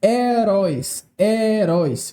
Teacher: veja apenas duas sílabas e a tonicidade recaiu na última sílaba